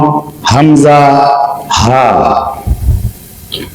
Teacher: এক নাম্বার মাখরাজ কন্ঠনালী বা খলকের মূল হতে দুইটি হরফ উচ্চারিত হয়